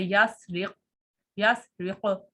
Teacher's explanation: تو یہاں پہ قاف جو ہے یہ ساکن ہونے کی وجہ سے مرتبہ رابعہ میں آ گیا ہے، اور اس سے پیچھے والے حرف کی حرکت جو ہے وہ زیر ہے تو وہ تفخیم نسبی میں ہوتی ہے. تو یہاں پہ مرتبہ رابعہ بملحق تفخیم نسبی کہیں گے، جیسے یسرق، یسرق.